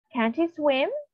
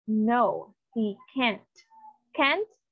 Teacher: the can't is pronounced longer compared on the first sentence.